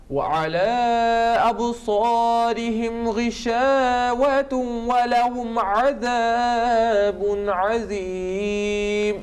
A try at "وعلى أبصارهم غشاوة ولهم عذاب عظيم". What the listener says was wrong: You done very well, but غشاوة junction, that joining, assimilation, idgham has been not properly, with nasal sound, 2 seconds.